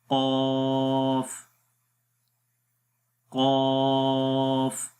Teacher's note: जब ज़ुबान की जड़ ऊपर तालू की तरफ उठेगी, यानी आवाज़ जब तालू की तरफ उठेगी तो उस वक्त इस हर्फ को मोटा पढ़ते हैं, तो आवाज़ आएगी क़ाफ। यहाँ देखें ज़ुबान की जड़ तालू की तरफ उठ रही है, तो मोटा पढ़ेंगे